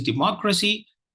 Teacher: And the second syllable is stressed. It's a 4-syllable word.